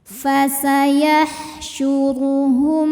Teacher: sukun yang menghadapi huruf selain mim dan ba yaitu huruf hamzah maka mim sukunnya ini kita bunyikan dengan jelas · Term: izhar syafawi